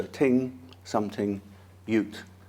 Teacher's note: in MLE a small set of voiceless th words may be pronounced with t